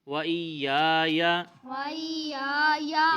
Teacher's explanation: یا کو سختی سے پڑھیں گے, الف مدہ ہے لمبا کر کے پڑھیں گے